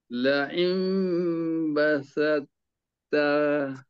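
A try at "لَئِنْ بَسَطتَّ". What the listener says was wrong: Tebal tu tak ada. Yang pertama dah ada tapi lambat sikit. Yang kedua tak ada.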